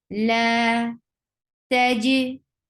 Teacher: like you close the makhraj very tightly and then you let it go a little, which creates qalqala